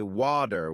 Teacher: In American English, people might say water with a d sound, while in British English, it's often wu with a t sound.